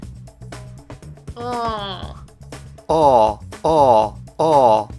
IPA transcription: ɒ